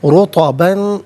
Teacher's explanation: را پر پیش ہے، را کو پر کر کے پڑھا جائے گا، اور رطباً میں با پر 2 زبر کی تنوین ہے، تنوین کے بعد جیم حرف اخفا ہے، تو تنوین کو یہاں پر اخفا کے ساتھ پڑھیں گے۔